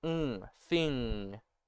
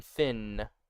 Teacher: it's like a nasal sound that's made at where your K's and G's are. So think the N at the end of thing, ng, right?